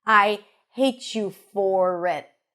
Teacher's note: Hate you for it. She doesn't reduce the for even though it's a function word because she wants to emphasize it.